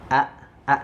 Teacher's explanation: tenggorokan bagian bawah tenggorokan bawah itu nanti tepatnya pada pita suara pita suaranya itu nanti dia tidak terbuka tapi dia malah mengecil ya menyempit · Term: huruf hamzah